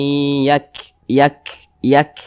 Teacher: dia sukun seperti ini W Yak Yak Yak nah seperti itu ada hambusan napas e sedikit angin yang keluar daripada mulut kita · sini ada Ro Eh di sini duluah ini ada huruf Kaf huruf Kaf ini dia sukun nah nah huruf Kaf juga memiliki sifat hams